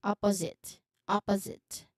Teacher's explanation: the letter S we say it with a buzzing sound or a voiced sound letter Z